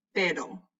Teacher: For an R, it'll just flutter. It'll just barely touch the roof of your mouth.